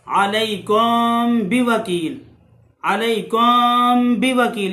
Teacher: मीम को छुपा कर गुन्ना करके पढ़ेंगे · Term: इख्फाए शफवी